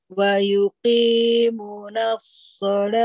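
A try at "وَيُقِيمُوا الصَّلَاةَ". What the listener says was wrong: Nggak ada naknya, Bu. Nggak ada naknya.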